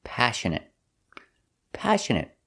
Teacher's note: stress is on a first syllable